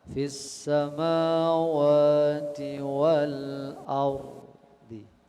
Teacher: itu boleh dengan namanya raum ya, membunyikan setengah atau sepertiga harokat.